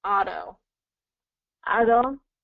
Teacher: So the T becomes a D pronunciation because it's surrounded by vowels.